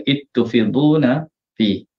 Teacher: Kita tengok zal pada kalimah iz bertemu dengan ta, kalimah tufidun. Ya, baca dengan idgham lah, idgham saghir.